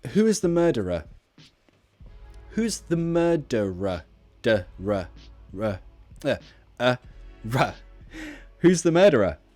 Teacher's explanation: So again, we've got two schwas linked with an R.